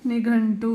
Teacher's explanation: ಇಲ್ಲಿ ಟ ವರ್ಗದ ಮೊದಲನೇ ಅಕ್ಷರ ಟ ನೇ ಇದೆ ಹಾಗಾಗಿ ಇಲ್ಲಿನ ಅನುಸ್ವಾರಕ್ಕೆ ಣ ಅನ್ನೋ ಸೌಂಡ್ ಬರುತ್ತೆ